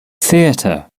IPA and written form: ˈθɪətə (theatre)